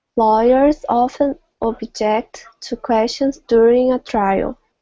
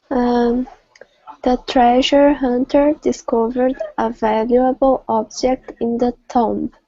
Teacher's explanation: Yes, again we see the pattern where the verb has a stress in the second and the noun has a stress in the first.